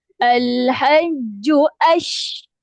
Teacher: kemaskan huruf syin tu bagi ada keluar angin menyembur